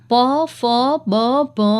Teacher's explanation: એનો ઉચ્ચાર કરતી વખતે બંને હોઠ ભેગા થાય છે